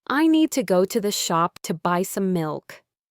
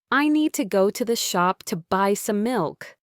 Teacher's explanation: The little words in between are squeezed and connected. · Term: sentence stress